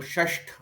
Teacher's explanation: त को ट, थ को ठ और न को ण कर लिया। जैसे शश धन थ, तो षष्ठ हो गया। · श षटकोण जो है वो मूर्धन्य है, और त और थ और न जो है वो दंत्य है, और श के बाद सीधे त थ न बोलना न के बराबर संभव है।